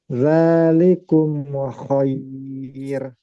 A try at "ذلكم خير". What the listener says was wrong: jangan mantul. Zalikum khair.